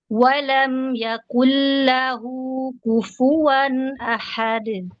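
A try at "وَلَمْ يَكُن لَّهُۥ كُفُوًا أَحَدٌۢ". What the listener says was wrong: Nah, sini kaf jangan jadi qaf ya, yang yaqul lahu yaku ku.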